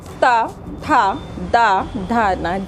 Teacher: ठीक दांत की जड़ों पे आके हमारी जीभ टकराती है, तो इसको हम दंत्य वर्ग कहते हैं।